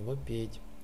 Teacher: Ну, есть также в области гласных такое явление, как между мягкими гласными А переходит в Е.